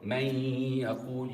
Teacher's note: And for man yaqul, you could hear my nose moving because there is a ghunna